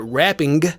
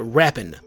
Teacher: You can shave it off and take the G off of it and just turn it into an N. So instead of like wrapping, it's like rapping.